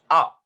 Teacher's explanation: आ is produced when your mouth is open and it is produced from throat. That means, और throat में हमारे vocal cords होते हैं।